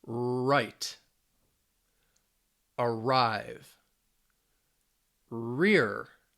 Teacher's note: your tongue is up but it's toward the back of the mouth it's towards the back it's it's kind of it almost feels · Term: r sounds